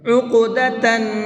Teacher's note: قلقلہ کہتے ہیں ہلکا سا آواز کو ڈبل کر کے پڑھیں گے۔ عقدتاً، نون کے اندر غنہ کریں گے، اس لیے کہ نون کے اوپر تشدید ہے، اور نون کے اوپر تشدید ہوتی ہے تو نون کے اندر غنہ کر کے پڑھتے ہیں۔